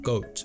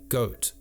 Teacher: In this short study, the changes are subtle, but you can play around with an exaggerated version of this by saying words like goat at the back of the mouth, and then goat further forward in the mouth · the O vowel, as in goat, began to be made further forward in the mouth